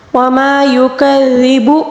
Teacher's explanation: ذال کو بالکل ہلکا نرمی سے پڑھا جائے گا